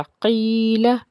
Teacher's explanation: आगे क़ाफ को पुर पढ़ेंगे क्योंकि हरूफ़ मुस्तालिया का हर्फ है। उसके बाद या साकिन है, या साकिन से पीछे ज़ेर होने की वजह से या मद्दा का कायदा है, एक अलिफ के बराबर खींच के पढ़ेंगे।